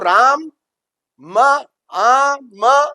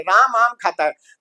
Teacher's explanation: तो जैसे ये है जैसे इसी तरह हम जैसे ये राम है अब हम लिखते तो राम है। राम लेकिन बोलते राम है आधा अ को उच्चारण नहीं करते।